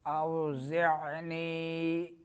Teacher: اوزعنی، اوزع عین درمیان حلق سے زا میں سیٹی نکلے گی